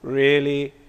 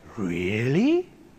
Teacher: does your answer really said with a level tone always express boredom or does a rise such as really Express excitement